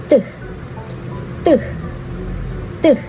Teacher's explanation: It is right behind my upper front teeth. Finally, it is a stop or plosive because the airflow is blocked for a moment before being released